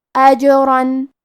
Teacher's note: کلمت اجرن میں یہاں جیم پہ جزم ہے تو کیونکہ جیم حروف القلقلہ میں سے ہے لہذا ہم یہ حرف کو ہلاتے ہوئے یہ کلمہ کو پڑھیں گے